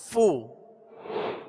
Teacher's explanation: اور اس کی مخرج فا کا اوپر کے دونوں دانتوں کے کنارے اور نچلے ہونٹ کا تر حصہ، یہ اس کا مخرج ہے